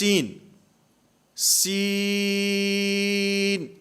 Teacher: اس میں سین آواز ناک میں نہ جائے